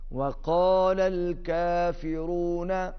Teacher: پہلا قاف موٹا دوسرا کاف باریک